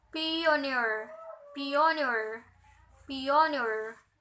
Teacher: Okay, and then the examples of verb suffix it, graduate. And then the noun suffix has primary stress